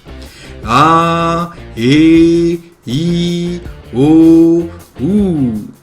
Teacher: Le son est, encore une fois, doux et surtout lent. Il tient dans la longueur. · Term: voyelle longue